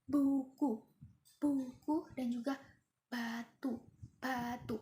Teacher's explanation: beh ini dihasilkan dengan getaran pita suara yang bersuara